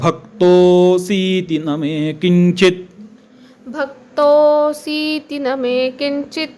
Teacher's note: इथे क्तोचा उच्चार जो आहे तो दीर्घ करायचा